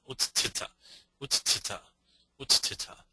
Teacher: we want a mahapranaha, an aspirate hard consonant, so tha will be the adesha